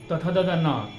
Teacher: तथ दद न का उच्चारण स्थान दांत दंत हो गया, यानी दांत उच्चारण स्थान उसको हम लोग कहेंगे।